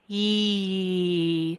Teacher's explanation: This I is actually the sound E. So for the E sound, our tongue is high and front.